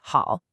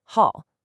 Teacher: it's the fourth tone, the falling tone